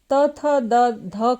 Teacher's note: त थ द ध का उच्चारण दंत से होता है इसमें हमारा जो जीभ है वोह दांत को टच करता है उसी प्रकार से ऊपर के दांतों के अंदर के जो मसूड़े